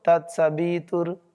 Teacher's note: व जो है वो होठों से नहीं बोलेगा होठ खुले रहेंगे